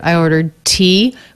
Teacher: that is a true tea because the t there begins a stressed syllable